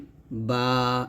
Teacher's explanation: বা উচ্চারণ করতে হবে দুই ঠোটের ভিজা জায়গা হইতে যেমন বা এরকম এইযে দুই ঠোট মিল করে আমরা ভিজা জায়গা